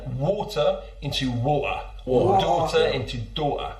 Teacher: The classic one that probably you know already is the glottal T. So that's when you turn water into water.